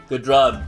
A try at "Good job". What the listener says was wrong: You didn't even say job right. You said drob.